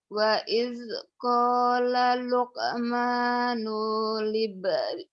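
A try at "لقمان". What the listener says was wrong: Nunya pendek. Wa iz qala Luqmanu libnihi wa huwa ya'idhuh.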